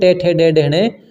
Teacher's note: ट आपका मूर्धा से उच्चारित होता है